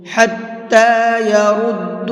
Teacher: حَتَّى يَرُدُّوكُمْ، را کو بھی منہ بھر کے پڑھیں گے